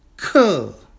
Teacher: That's a fourth tone character. That's a falling character, falling tone.